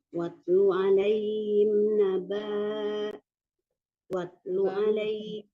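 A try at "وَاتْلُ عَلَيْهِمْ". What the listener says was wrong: Ya, ba-nya tidak panjang Bu.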